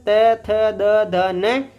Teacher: इनका उच्चारण स्थान क्या होता है? दंता होता है।